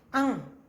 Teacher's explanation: अनुस्वार बोलते समय हवा केवल नाक से निकलती है। अंग, आप अंग में आवाज आपके सिर्फ जो आपके हवा का जो है भाव वो आपकी नाक में से ही निकलेगा।